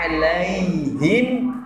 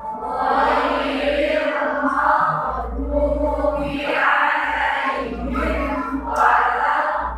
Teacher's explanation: Kalau ya sukun itu langsung ke i, bukan ke e ya. Ya, alaihim bukan ke y, bukan alaihim, tapi langsung ke i.